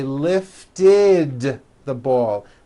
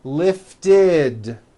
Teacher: we add the ending id, which is a vowel I followed by a D, which is voiced.